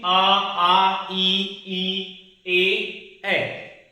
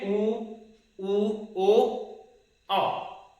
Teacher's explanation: ऊ के उच्चारण में होंठ का जो आकार कैसा हो जा रहा है, गोलाकार हो जा रहा है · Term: वृत्तमुखी